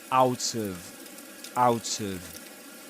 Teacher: That's an instance of catenation there because there's he links the final consonants in out to the the initial vowel sound in of